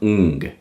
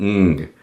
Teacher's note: It's like your nose almost vibrates. What this means is whenever you are speaking, there's air coming out of both your mouth and a little bit out of your nose. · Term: nasal resonance